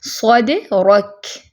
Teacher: کاف کیا ہے؟ حرف شدہ محموسہ ہے، ٹھیک ہے، اس میں ہمس کی صفت بھی ہے اور شدت بھی ہے